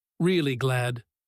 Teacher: first plain, then stressed and stretched with really in front of it